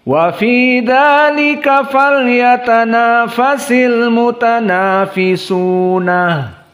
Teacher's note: Maka di sini al-mutanafisun dari jam'i mudzakkar as-salim, maka dibaca ayat ini oleh Ya'qub dengan ha as-saktah